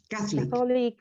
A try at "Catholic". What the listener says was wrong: Catholic. No. No. The stress is in the first syllable. Let me write it. Catholic.